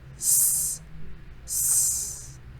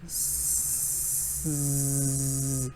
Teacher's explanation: It's right behind your teeth, behind your upper teeth, and you push out the air. So s, s. And if I add vibration, it changes to z. Z. Then I'm adding vibration.